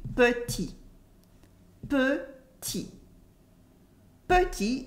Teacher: We have the E that disappears in petit.